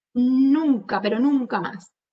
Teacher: Simplemente yo le doy énfasis a esa primera sílaba